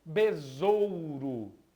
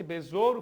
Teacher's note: o Besouro possui apenas um único s e fica com o som de z